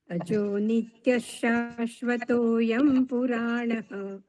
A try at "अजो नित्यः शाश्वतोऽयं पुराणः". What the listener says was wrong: શાશ્વતોની આગળ વિસર્ગ છે, એટલે હજુ એક શકાર બોલાય. અજો નિત્ય શાશ્વતોયમ પુરાણઃ. અજો નિત્ય શાશ્વતો.